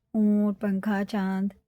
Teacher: عین حرف علقی، یہ اخفا ہے، اخفا ہوتے ہیں تنوین اور نون ساکن کے بعد 15 حروف ہوتے ہیں، جو ان کے بعد آ جائیں تنوین اور نون ساکن کے کن کے تو غنہ بھی ہوگا اخفا بھی ہوگا۔ 1 الف کے برابر اس کو ناک میں چھپا کر پڑھنا ہوتا ہے